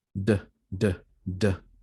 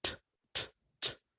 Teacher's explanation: That's a vibration because it is voiced, d, d, d. Whereas tap is t, t, t. And there is no vibration. If you feel a vibration, it's not because of the t, but because of the tap, t, t, tap.